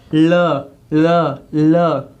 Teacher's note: ल दांतों पर स्पर्श कर रही है हमारी जिह्वा, दांतों को मार रही है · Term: दंत्य व्यंजन